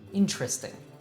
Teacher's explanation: four syllables it is really important for you to know that normally you'll hear native say it with just three syllables